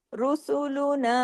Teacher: हत्ता इजा अत रुसूलुना र को हैवी कीजिए। रॉ कंडीशनल हैवी है पेश की वजह से · را کو ہیوی کیجئے، را کنڈیشنل ہیوی ہے پیش کی وجہ سے